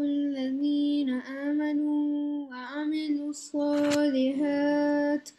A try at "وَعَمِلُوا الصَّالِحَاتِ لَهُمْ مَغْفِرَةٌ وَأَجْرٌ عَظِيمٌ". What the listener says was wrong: صالحات you have to join this one okay you don't have to stop there is a small symbol called لا No means no stop. وَعَمِلُوا الصَّالِحَاتِ لَهُمْ مَغَفِرَةٌ وَأَجْرٌ عَظِيمٌ Say again.